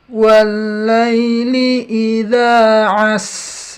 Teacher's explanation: jadi sinnya rikhwahnya kepanjangan. Sifat berjalannya sin jadi kepanjangan.